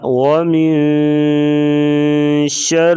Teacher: من پہ اخفا کریں گے، یعنی آواز کو ناک میں آواز چھپا کر غنہ کرنا۔ ومن شر، را کے نیچے زیر ہے، را کو باریک پڑھیں گے، ہا کا تعلق گلے سے ہے، ہا شر، ہا آگے الف مدہ آ گیا، اسے لمبا کریں گے ایک الف کے برابر۔